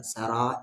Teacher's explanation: مد کے سمبل کے بعد حمزہ ہے 3 سے 4 الف کے برابر